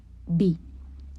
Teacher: B is bilabial and stops. B. And V is labiodental and fricative.